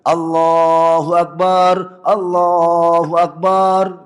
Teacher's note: itu salah karena dia sudah menambahkan panjangnya harakat. Seakan-akan setelah ba itu ada alif menjadi mad thobi'i kan.